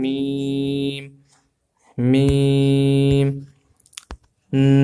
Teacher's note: لام میم، آپ نے دیکھا کہ اب دونوں ہونٹ مل گئے ہیں، دونوں ہونٹوں کے ملنے سے میم ادا ہوگا